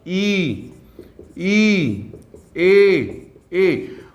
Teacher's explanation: अवृत्ताकार वे वर्ण हैं जिनके उच्चारण में होठ जो है वो अवृत्ताकार बनाते हैं। अवृत्ताकार मतलब ई, ए।